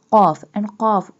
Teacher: We also bold the qaf because qaf pronounced by touching the tongue from the soft part of palate